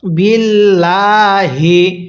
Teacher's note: লামটা আমরা চিকন করে পড়ব, কারণ আল্লাহ শব্দের লামের পূর্বের হরফের নিচে জের। আর আমরা একটু আগে একটি নিয়ম পড়ছি, এই লামের পূর্বে যদি জের থাকে তাহলে লামটাকে চিকন করে পড়তে হবে।